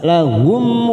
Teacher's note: mim sukun Idhar syafawi kita baca jelas